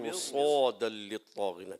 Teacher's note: مر میں را کو ہلائیں گے نہیں